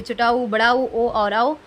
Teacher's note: वृत्ताकार स्वर, इनका उच्चारण करते समय होठ की आकृति वृत्त के समान हो जाती है